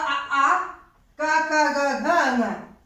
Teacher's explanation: कंठ से बोले जाते हैं। इनका उच्चारण स्थान कंठ है।